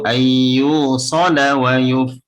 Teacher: Yu-nya panjang ada wawu.